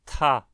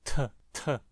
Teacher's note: É como se fosse um T seguido de uma saída mais forte de ar, como se houvesse um som de H, depois dele. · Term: T aspirado